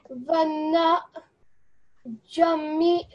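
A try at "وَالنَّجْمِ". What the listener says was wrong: Okay, so when you're merging these two, just make the, when you merge it, just make it flow a little bit better. Vannajmi.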